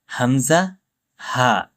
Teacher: ১ নম্বর মাখরাজ কণ্ঠস্বরের প্রথম থেকে উচ্চারিত হয়, যেমন হামজা, হা। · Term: হলকের শুরু